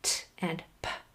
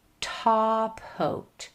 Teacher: In this one, you're not hearing at all. So those two T's and the P's are voiceless. There's no vibration happening. It's just T and P. So those are just puffs of air.